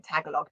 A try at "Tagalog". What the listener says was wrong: it's not like tagline it's tagalog